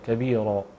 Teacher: تفخيم الراء تفخيما كاملا، وايضا وقع بعدها الف فتكون في اعلى مراتب التفخيم